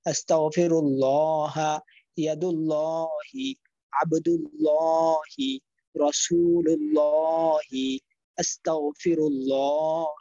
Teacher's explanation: আল্লাহ শব্দের আগে পেশ আসলেও মোটা করে পড়তে হয়।